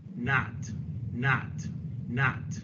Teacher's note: very open fronted no lip rounding in a New York accent lot hot not God here's a New York speaker not not